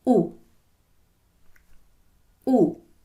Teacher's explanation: When you say the word rule, you do not put an I sound in front of the U. You just say rule, U.